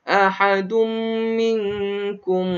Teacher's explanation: Ahadum. Kemudian ada tanwin bertemu dengan mim. Maka hukumnya wajib al-ghunnah. Wajib didengung kedua harakat.